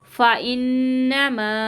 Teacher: فَمَن بَدَّلَهُ بَعْدَ مَا سَمِعَهُ فَإِنَّمَا، ٹھیک ہے، اس کو 3 الف کی مقدار کھینچیں گے، نون مشدد کا گنہ کریں گے